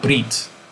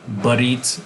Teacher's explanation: brit would be the complex monosyllable, barit would be the sesquisyllabic version